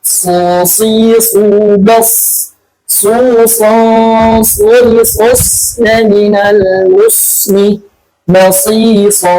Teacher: O, betul-betul O ya. O atau dibulatkan. Karena dia punya sifat itbaq.